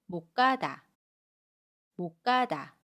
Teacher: 받침 시옷은 받침소리 디귿으로 발음하고요. 첫소리 기역은 까로 된소리로 발음해요. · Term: 된소리 되기